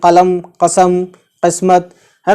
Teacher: जब 'क़ा' का उच्चारण 'क़ाफ़' होता है, तो इसकी ध्वनि गले से निकलती है। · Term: बड़ा 'क़ाफ़'